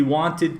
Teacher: All of these EDs sound like id. They are their own syllable.